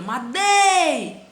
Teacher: A sílaba tônica, o dei, é a penúltima, então é um caso de paroxítona.